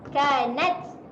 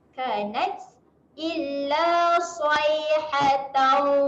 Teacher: Huruf ta ketika mati dia ada keluar angin.